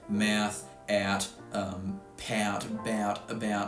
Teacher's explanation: the ow vowel in mouth doesn't even involve moving my tongue upwards anymore. I don't do shit when I say that vowel. · I don't do shit when I say that vowel. The ow vowel, for me, is super flat, and it stays pretty much in the bottom half of my vowel space the entire time.